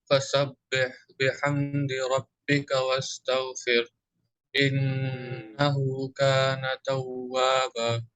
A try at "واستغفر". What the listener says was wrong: In wastaghfir, make clear that there is a ha sukun at last.